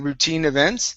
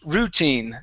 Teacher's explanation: the stress, instead of being at the end saying routine events, it's routine. So our stress is here at the beginning.